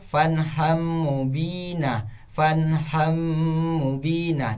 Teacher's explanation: huruf nun yang di ujungnya dihapuskan, diganti dengan huruf setelahnya huruf mim, dan huruf setelahnya itu ditasdidkan. Jadi di situ bacanya fanham mubina, fanham mubina, dan jangan lupa untuk didengungkan. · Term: idgham biguna